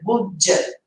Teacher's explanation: Vou juntar, vai dar aquele som de j. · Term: sons grudados